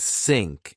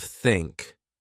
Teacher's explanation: Then I learned that to make the sound, I needed to relax. I put my tongue gently between my teeth. I blew air.